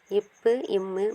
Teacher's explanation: மேல் உதடும் கீழ் உதடும் தொடுவதால் பிறக்கின்றன